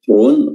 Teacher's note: ra di sini tafkhim tebal karena berharakat dhamma